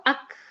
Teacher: Akhirnya ada nafas yang nafas ini melemahkan suara tersebut. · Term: Hams